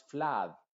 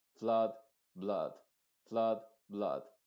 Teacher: no pronuncies esta vocal con una A muy abierta, es decir, no es flad, blood, no así, sino que abre un poquito solamente la boca y terminas diciendo flood, flood. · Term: U modificada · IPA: /ʌ/